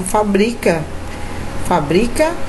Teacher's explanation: Fabrica, sílaba tônica está no bri. Então, observe, quando eu mudo a posição da sílaba tônica, eu formo uma nova palavra com um novo significado.